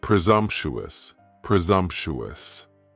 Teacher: Next is presumptuous, and presumptuous has 4 syllables, and the stress is on that second syllable, and the S almost sounds a little more like a Z